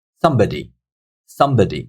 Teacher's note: So if you hear me, somebody. So the first syllable is taking the stress. It's much louder than the other syllables.